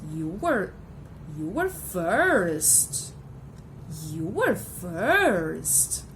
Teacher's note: we've got the rise fall, which is used to convey strong feelings of great surprise, astonishment, disapproval